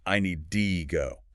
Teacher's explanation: Function word reduction. The word to almost always becomes do. Like a quick duh sound, I need to go, becomes I need D go.